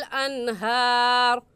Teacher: अनहार पर गुन्ना नहीं करेंगे क्योंकि नून साकिन के बाद हरूफ हल्की में से हा आ गया है।